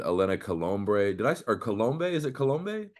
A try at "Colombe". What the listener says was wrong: The B is actually silent. So Colombe.